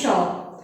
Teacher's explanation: इसको तालव्य श क्यों बोलते हैं, क्योंकि बच्चों इसका जब उच्चारण होता है तो तालु से होता है।